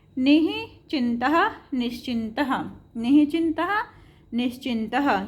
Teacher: यदि विसर्ग के बाद च या छ हो तो विसर्ग का क्या हो जाएगा, श हो जाएगा, तालव्य श हो जाएगा। जैसे निश्चिन्तः निश्चिन्तः, निश्चिन्तः निश्चिन्तः, यहाँ पे देखो चा था ना, तो इसका क्या हो गया, श हो गया।